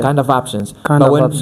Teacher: the F can be kept. It's gonna have a V sound, but it can be kept if the other word starts with a vowel.